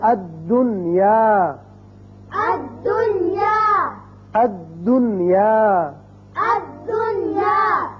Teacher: چونکہ یہ دو کلموں میں نہیں لہذا یہاں ادغام نہیں ہوگا، اظہار ہوگا، اور دوسرے اگر دنیا پڑھیں تو اس لفظ کی خوبصورتی اور حسن بھی باقی نہیں رہتا، لہذا یہاں نون پر اظہار ہوگا۔ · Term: اظہار مطلق